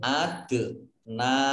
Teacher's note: Adna, dalnya dal sukun, bacaan kolkolah, ya dibaca memantul. Adna, nun fathah berdiri, mat tobi'i, kemudian lamnya ada tasdidnya dibaca double, zal kasroh ya sukun, mat tobi'i dibaca panjang 2 harokat.